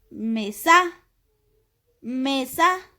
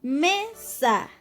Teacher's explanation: entonces nuestro acento recae en la sílaba me